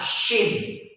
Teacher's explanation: Shin itu monyong. Ya. Monyong ke depan.